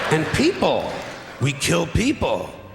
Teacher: the pitch of his voice goes up each time